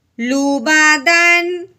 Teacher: تنوین کے بعد جب حمزہ حروف ہلکی میں سے آ گیا ہے, اب ہم نے تنوین پہ غنہ ہرگز نہیں کرنا, غنہ نہیں کرنا, کیونکہ حروف ہلکی میں سے حرف آ جائے تو تنوین پہ غنہ نہیں کرتے.